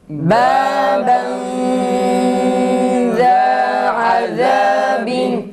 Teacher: Bir kere ihfa tam çıkmıyoruz. Ağız boşluğundan ses gelmemelidir. Genizden yani burundan ses gelmeli.